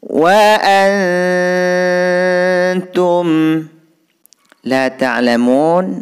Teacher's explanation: Nun sukun bertemu ta di sini hukum bacaan ikhfa hakiki. Cara membacanya bunyi an itu didengungkan 2 harokah. · Mun di sini hukum bacaan mad arid lisukun. Karena huruf mad yang berupa wawu bertemu huruf hidup dibaca waqaf. Panjangnya boleh 2, 4 dan 6 harokah.